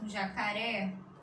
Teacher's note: a sílaba mais forte é a última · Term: oxítonas